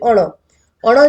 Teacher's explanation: અણ જે છે એ મૂર્ધન્ય પણ છે અલ્પપ્રાણ પણ છે અને અનુનાસિક પણ છે